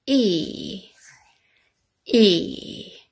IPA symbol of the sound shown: iː